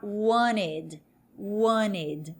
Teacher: No inglês mais norte-americano, esse T vai dar uma aliviada e a pronúncia vai ficar wanted. · É como se o T, na verdade, sumisse.